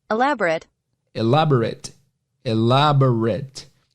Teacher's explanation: tem algumas palavras que tem esse ATE, só que a pronúncia é it, não é ate